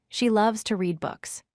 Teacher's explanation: Stress loves, read, and books with strong emphasis. The word to stays weak. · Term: sentence stress